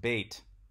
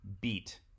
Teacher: It was pronounced bait with an A long vowel. And this gradually changed to this E vowel